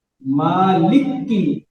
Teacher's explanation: काफ के ऊपर शद करा, मुखफ़फ़ को मुशद्दद कर दिया